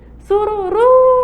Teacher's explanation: Esse ru aí, ó, é uma palavra oxítona. Olha, a sílaba tônica é a última